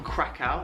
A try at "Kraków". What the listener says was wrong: But the real pronunciation is Krakow. It's not Krakow, it's Krakow. Instead of W at the end, it sounds more like an F.